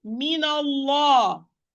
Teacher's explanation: Allah is going to be heavy because it's preceded by fatha